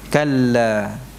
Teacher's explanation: Ini kalau berhenti kalla hanya 2 harakat saja.